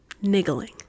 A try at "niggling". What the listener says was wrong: Maybe you're putting too much emphasis. On the middle syllable. Maybe it's like a j sound. Maybe the G is like a j.